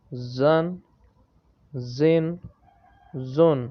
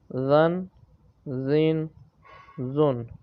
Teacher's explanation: تو جو زا ہے یہ سیٹی کی آواز سے پڑھا جاتا ہے، اور جو ذال ہے یہ بغیر سیٹی سے پڑھا جائے گا۔